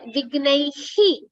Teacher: when you're saying he, you're completely expelling the air out.